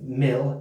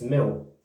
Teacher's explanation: Yeah, you may notice that anyone from within about a 50-mile radius of London, England, we do have a rare vernacular where a double L sound we do tend to pronounce almost like a W. So instead of mil, it's mil.